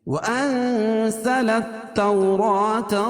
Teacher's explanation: وَأَنزَلَ التَّوْ واولین ہے، واو ساکن سے پہلے زبر ہے. را کھڑا زبر قائم مقام الف مدہ کہ اس کو 1 الف کے برابر کھینچ کے پڑھیں گے اور را کو پور پڑھیں گے